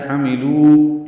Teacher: لو واو مدہ ہے، دو حرکات یہ لمبے کرنے ہیں، ما بھی اور لو بھی.